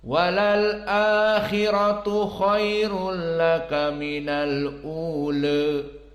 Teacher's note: Mad badalnya dua-duanya dibaca 2 harokat dan ra'nya mufakhomah.